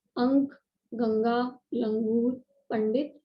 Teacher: अनुस्वार का उच्चारण नाक से किया जाता है